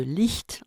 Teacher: de l'espagnol et la sonore au gmou du turc dans an au niveau palatal le rapprochement du dos de la langue et du sommet du palais d' produit la sourde de licht en allemand et la sonore